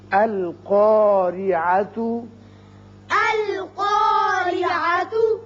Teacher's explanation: را کے نیچے زیر ہے، را باریک ہوگا